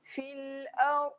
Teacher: dad berada di tepi lidah